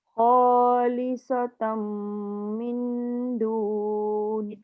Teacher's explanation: Jaga nun bertemu dal, nun kosong mesti dengung.